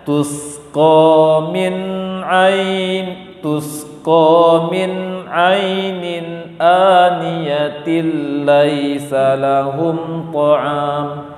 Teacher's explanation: Ini namanya setelah tajwid idgham bila gunnah. Memasukkan tanpa dengung, menggabungkan tanpa dengung